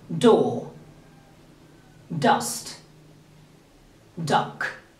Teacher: The first two sounds, t and d, are plosive sounds.